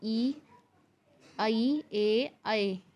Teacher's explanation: जो भी स्वर आगे की तरफ से निकलते हैं, जैसे कि ई, ऐ, ए, ऐ, ये सभी अग्र स्वर हैं।